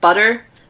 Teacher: obviously you're not really closing down on like a t sound in the middle of butter or a real d sound you would just sort of tap your tongue to the roof · sound in the middle of butter or a real d sound you would just sort of tap your tongue to the roof of your mouth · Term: alveolar tap